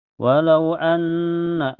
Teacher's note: ada gunna musyaddadah karena ada nun bertasdid. Cara bacanya ditahan sekitar 2 ketukan saja, dan sebabnya sebelum nun bertasdid ada huruf hidup yaitu harakat fathah di hamzah.